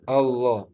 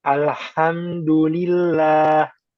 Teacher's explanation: ketika yang tipis a jangan kebawa tebal o